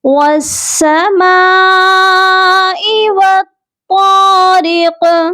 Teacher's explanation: ہم قاف پر قلقلہ کریں گے، یعنی آواز کو ڈبل کر کے پڑھا جائے گا · والطارق، طا کو بھی موٹا پڑھیں گے، قاف کو بھی موٹا پڑھیں گے، اور جب ہم یہاں پر سٹاپ کریں گے تو قاف ساکن ہو جائے گا۔ · یہ مد متصل ہے، اس کو کم از کم 3 الف سے 4 الف تک کھینچ کر پڑھا جائے گا